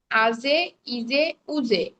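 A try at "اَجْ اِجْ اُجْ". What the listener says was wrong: উচ্চারণ পাল্টায় গেল, জিম তো শক্ত। নরম হবে না, উচ্চারণটা লাস্টের দিকে আবার নরম হয়ে যাচ্ছে। আপু আজে না, আপনি ঠিক বর্গীয় জয়ের মতো উচ্চারণ করতে পারেন।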